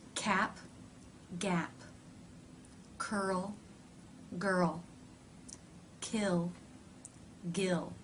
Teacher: the back part of the tongue reaches up and touches the soft palate cutting off the air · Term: stop consonants